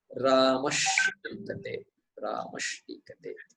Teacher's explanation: सकारः तु दन्तः अस्ति। Following letter is a मूर्धन्य, टीकते, मूर्धन्य. So sakara, same class, same vertical. Sakara becomes a मूर्धन्य, shakara.